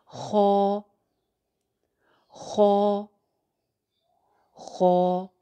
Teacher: खौ को भी एक अलिफ ही लंबा करके पढ़ना है, जैसे बा ता सा, वैसे हा और खौ। फ़र्क सिर्फ इतना है कि खौ को हमने मोटा रखना है